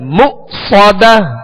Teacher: یہاں حمزہ ساکن ہے, اس کو جھٹکے سے ادا کریں گے مؤصدة. صاد کو سیٹی کی آواز میں اور پر پڑھیں گے